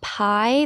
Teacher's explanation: in the word pie, there is a diphthong where you slide from I, you feel the vowel move